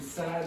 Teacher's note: The d has voicing, the vocal cords vibrate.